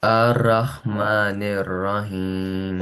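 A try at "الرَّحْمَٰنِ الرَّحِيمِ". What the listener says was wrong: Okay, you read this Ar-Rahmanir Rahim. but there is no fatha sign on this alif. So why you read this with fatha sign?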